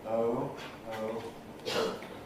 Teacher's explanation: O as in goat typically starts with a mid-central quality